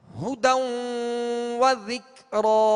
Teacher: ہونٹوں کو گول کر کے معروف طریقے سے پڑھیں گے مگر پیش کو دراز نہیں کریں گے، کھینچیں گے نہیں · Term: ہاں کا پیش